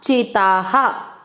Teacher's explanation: ता में आ की मात्रा है तो विसर्ग को पढ़ेंगे हा